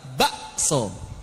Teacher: Di Jawa pakai ibdal. Kafnya diibdal ke hamzah.